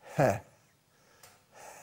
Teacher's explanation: الهاء صوت رخو مهموس ضعيف لين